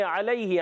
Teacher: لام پر کھڑی حرکت ہے، کھڑا زبر ہے، ایک الف کھینچ کر ادا کریں گے. علیہ، عین ادا ہوتا ہے حلق کے درمیان والے حصے سے